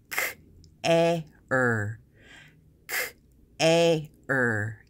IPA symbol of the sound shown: eə